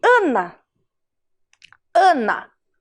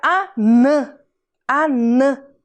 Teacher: o ar saiu todo pela minha boca um som oral mas se eu puser o sinalzinho gráfico em cima da última